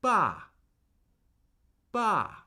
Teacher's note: And I want you to notice that the fourth tone begins where the first tone lives. And then as soon as you begin a fourth tone syllable, the tone immediately starts steadily falling. it can sound a little bit like a command, if you will.